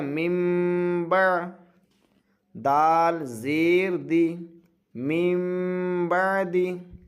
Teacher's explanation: جب ہجے کریں گے تو من ہی کہیں گے، لیکن جب نون کے ساتھ اس کو جوڑ دیں گے تو اب اس کو من نہیں کہیں گے بلکہ میم کہیں گے، نون کو میم سے بدل دینا ہے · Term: اقلاب